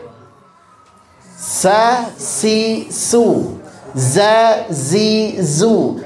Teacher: Sin dengan Zai sama dari segi makhraj yaitu ujung lidah ditempelkan ke gusi bawah